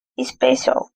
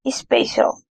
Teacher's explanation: houve a adição de um novo segmento, o i, que não existe na pronúncia dessa palavra em inglês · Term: epêntese